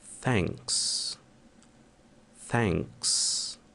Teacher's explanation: Ele pode ser produzido como se você estivesse falando um C com a língua entre os dentes. Então fica assim.